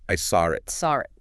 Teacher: Sometimes you might hear a little R sound. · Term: intrusion